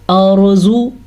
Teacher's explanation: را ساکن سے پہلے زبر ہے تو یہ را پر پڑھی جائے گی